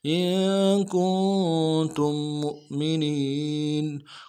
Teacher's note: میم کو حمزہ کے ساتھ ملائیں گے، جھٹکا دیں گے، اور منین میں نون کو یا کے ساتھ ملانا ہے، یا مدہ ایک الف دال میں کھینچیں گے۔